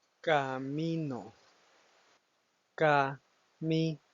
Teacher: En este caso, como pueden escuchar, el enfoque principal, es decir, el acento prosódico, se encuentra en la sílaba mi, donde no lleva ninguna tilde visible, pero la palabra básicamente genera el impacto, genera la fuerza que le da el sentido a la palabra.